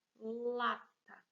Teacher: Percebam que o lá é a sílaba tônica, é a sílaba que a gente pronuncia com mais força. Então, lá é a sílaba tônica e esse tá aqui é a sílaba átona.